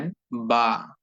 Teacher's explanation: বা অক্ষরটি উচ্চারিত হয়ে থাকে দুই ঠোঁট থেকে দুই ঠোঁটকে একত্রিত করে দুই ঠোঁটকে মিলিয়ে দিয়ে একসঙ্গে করে দিয়ে যুক্ত করে দিয়ে বা